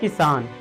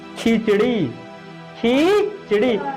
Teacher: खी में हल्का सा उसको खींचा जा रहा है साउंड को